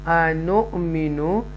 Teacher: یہاں پر حمزہ ساکنہ آیا ہے، یہاں ٹویچ کریں گے، تھوڑا سا جرک دے کر جھٹکے سے